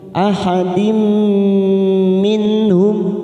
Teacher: nun sukun bertemu ha idhar halqi. Kita baca jelas minhum